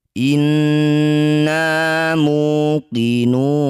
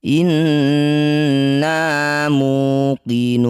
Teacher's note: Dhammah diikuti waw sukun, nu disebut bacaan mad tabi'i. Mad tabi'i bertemu huruf hidup kemudian dihentikan, disebut bacaan namanya mad alif lis sukun. Nu panjangkan 6 harokat, huruf terakhir sukunkan.